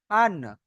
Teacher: নুনের মাখরাজ তাহলে হলো জিভের আগা উপরের তালুর সাথে লাগিয়ে নুন উচ্চারণ হয়